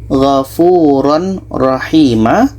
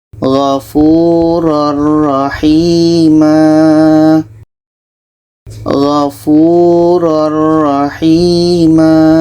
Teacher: bunyi tanwin kita masukkan ke ro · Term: idgham bilaghunnah